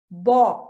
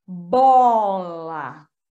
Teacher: o O já vai fazer um movimento antecipatório junto com o bo. Tanto que eu vou bó, o biquinho aqui, né? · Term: coarticulação